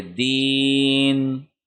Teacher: پھر آگے بنیادی طور پہ یہ تھا دینی، لیکن جب وقف کریں گے تو نون کی جو زیر ہے وہ جزم میں تبدیل ہو جائے گی